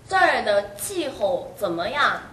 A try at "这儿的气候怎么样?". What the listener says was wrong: 치의 파열음이 아직은 잘 나지 않아요. 혀를 아주 편하게 두어봅시다. 혀끝이 어디에 와있죠? 아랫잇발 아래에 오돌도돌한 아랫잇몸에 와있습니까? 혀끝을 거기에 두십시오. 그 혀를 앞으로 약간 밀면 혀끝은 아랫잇몸에 와 있고 혀를 밀면 이러한 상태가 될 것입니다. 혀의 가운데는 약간 도도록하게 나와 있습니다.